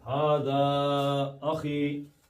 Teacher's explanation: ہاذا کے بعد زا، زبر کے بعد الف آیا مد اصلی بن گیا ، اس کے آگے حمزہ آ گیا، تو یہ بھی ہاذا